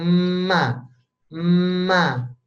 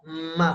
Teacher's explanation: Ma ini anginnya keluar tapi dari hidung, Pak. Ma, karena kita blokade jalur bibirnya.